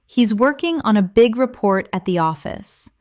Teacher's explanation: Stress working, big, report, and office. This will help you speak with a natural English cadence instead of sounding too flat or robotic.